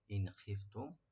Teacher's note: ইন খিফতুম, ইন এখানে হরফে নুন সাকিন এখানে জাহার করবো আমরা। খিফতুম, মিম সাকিন এখানেও এজাহার হবে, ইন খিফতুম।